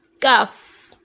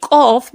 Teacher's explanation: I could have said kaf, but instead I will say qaf because it's meant to be thick. It's meant to be pronounced thick.